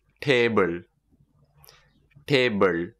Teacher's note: we don't actually pronounce the l in table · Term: l sound